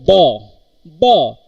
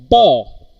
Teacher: two lips comes together they are getting closed and the air after the opening of these lips air explosively comes out of the mouth cavity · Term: bilbial sound